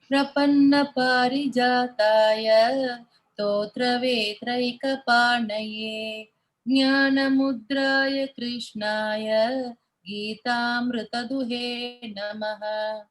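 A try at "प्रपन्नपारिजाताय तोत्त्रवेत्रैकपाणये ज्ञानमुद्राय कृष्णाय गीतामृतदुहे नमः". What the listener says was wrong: Very good. Very good.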